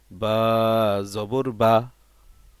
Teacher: আমরা বা হরফটা বলার সময় যে টানটা আছে ওইটা দিব, কিন্তু হরকত যখন চলে আসবে তখন আর বাতে কোনো টান হবে না। কারণ হরকতের উচ্চারণ তো তাড়াতাড়ি করিয়া পড়িতে হয়।